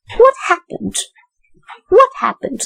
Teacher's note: There, what is in the rising tone? Happen is in the falling tone. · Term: falling intonation